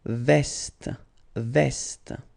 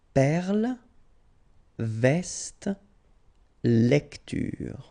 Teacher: you will pronounce it like E, so it's really open, you know, E